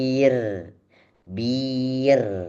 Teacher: bukan R-nya yang panjang, B-nya dulu panjang.